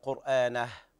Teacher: انتبه إلى الهاء، الهاء ضعيفة، لا تضغط عليها في الشدة